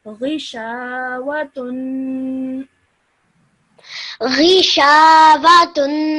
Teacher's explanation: remember to do the tanween at the end, the nasal sound, gunna sound at the end